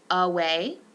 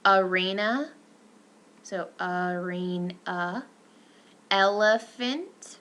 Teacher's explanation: This is referred to as the schwa, and it is a central, mid, lax, neutral lip rounded vowel.